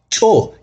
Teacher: a glyph in the shape of a mouse head uses a glottalized consonant pronounced with a tense release